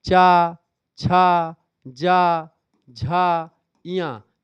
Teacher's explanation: ये सब कहाँ से निकलते हैं? आपके तालु से निकलते हैं, तालव्य व्यंजन है ये।